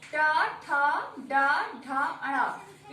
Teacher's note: ट ठ ड ढ अण, इसका उच्चारण स्थान मूर्धा से है